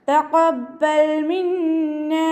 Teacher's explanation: ഖാഫ് ഇസ്തിഅലാൻ്റെ letter ആണല്ലോ, അപ്പോൾ തഫ്ഹീം ചെയ്യുക. ഖാ എന്നുള്ള സൗണ്ട് തന്നെ കൊണ്ടുവരാം കേട്ടോ.